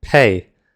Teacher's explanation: the a in the word pay. This might be a surprise to some of you, but this is indeed two separate sounds. The easiest way to prove that is by asking the question, can you elongate that exact sound indefinitely? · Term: compound vowel